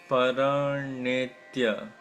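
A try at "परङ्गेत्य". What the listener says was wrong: Paranyetya, it's Paranga, Anga. It's not Nara. Na is N with a dot below. This is Anga.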